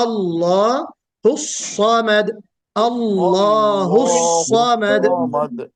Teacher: یہ کل میں نے بتایا تھا کہ سواد، سین اور زائی تینوں میں سیٹی بجتی ہے، لیکن سیٹی کی نوعیت الگ ہے۔ سواد میں سیٹی کم بجے گی، لیکن اس میں استعلا کی جو صفت ہے موٹا پڑھے جانے کی، وہ بالکل واضح ہونا چاہیے۔